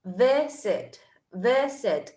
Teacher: La primera sílaba es la que tiene el stress.